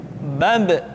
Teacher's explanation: Ketika mati, maka terdengar suara pantulan.